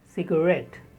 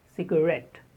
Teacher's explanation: The stress on the second syllable, ret.